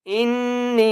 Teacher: نی چھوٹی مد ہے اس لیے 3 الف کی مقدار کھینچ کر پڑھیں گے